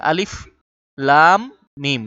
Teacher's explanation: লামে যেহেতু চার আলিফ টান আছে টান দিয়ে বলব লা শেষ করে আবার মিম কে ধরে ফেলবো